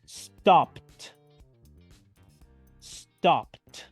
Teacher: pronunciando la terminación e d como una letra T